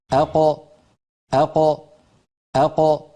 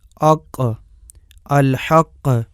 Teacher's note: زبان کی انتہا اور گوشت والے نرم تالو سے قاف ادا ہوتی ہے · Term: قاف کا مخرج